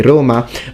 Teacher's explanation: whether you're from naples you're from rome you're from the north you will always close and say roma but in sicily we say roma which is closer to how